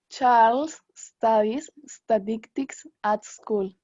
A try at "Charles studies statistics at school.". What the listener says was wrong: Ya, cuidado que ahí en statistics a veces le ponía una E al principio.